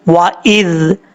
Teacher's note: اس کا مخرج ہے زبان کا سیدھا اوپر والے دانتوں کے اندرونی کنارے سے لگے تو زال پڑھا جاتا ہے